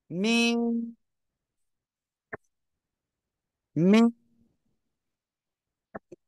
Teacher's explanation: দুই ঠোঁটের শুকনো অংশ থেকে অর্থাৎ বাইরে থেকে